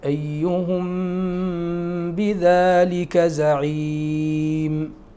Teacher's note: بالغنة بمقدار حركتين في الميم، في الميم المخفاة في الباء